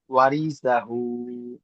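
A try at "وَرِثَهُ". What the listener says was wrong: এই রটা একটু টান হয়ে যাচ্ছে, একটু খেয়াল করবেন।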